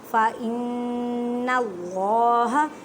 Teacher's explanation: اللہ کے لفظ کو موٹا پڑھیں کیونکہ اللہ کے لفظ سے پہلے زبر ہے، جب اللہ کے لفظ سے پہلے زبر اور پیش آ جائے تو اس کو اللہ کے لفظ کو موٹا پڑھتے ہیں۔